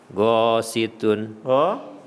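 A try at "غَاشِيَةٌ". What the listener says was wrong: Ada huruf yang ketinggalan. Syinya dimantapin. Ghasyiyatun.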